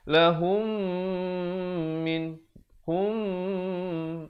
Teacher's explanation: mim mati bertemu dengan mim yang bertanda sabdu, hukumnya idgham mislan saghir, didengungkan 2 harakat